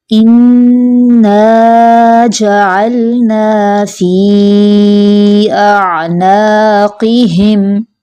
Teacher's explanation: قوف کو پر کر کے پڑھے اور ہا کی آواز واضح آئے۔